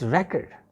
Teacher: The stress will be on the first syllable